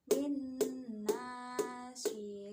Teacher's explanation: Cara membaca hukum bacaan idgham bigunah yaitu dengan meleburkan nun mati atau tanwin menjadi suara huruf yang ada di depannya. Hukum bacaan idgham bigunah ini dibaca dengan dua ketukan